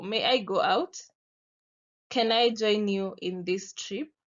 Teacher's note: you can see my voice starts rising and then falls. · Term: falling intonation